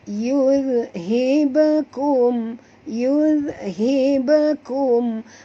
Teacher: Lantunan dia tu macam seolah bersambung dengan kum ni. Jadi kita baca yuzhibakum. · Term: qalqalah sughra